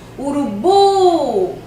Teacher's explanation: Urubu não tem acento, mas pela pronúncia eu vou saber que a sílaba tônica é o bu.